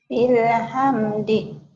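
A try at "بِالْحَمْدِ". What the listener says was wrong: bilhamdi dihentikan jadi bilhamd sama.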